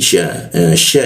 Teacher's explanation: sya itu posisi di tengah lidah dia ya syi jadi dengungnya itu di tengah lidah dia.